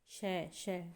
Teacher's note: श बोल के देखिए तो क्या होता है तालव्य होता है यह एक तालव्य ध्वनि है तालू इसका उच्चारण स्थान होता है